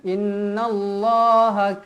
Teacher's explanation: Allah lafzul jalalah dibaca tebal kerana sebelumnya berbaris atas · Inna Inna wajibul gunah wajib dibaca dengung dua harakat